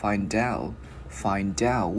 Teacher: Giữ chữ T loại out. Một hồi mình sẽ luyến cái chữ D qua cái chữ out luôn, thì nó sẽ thành là find out.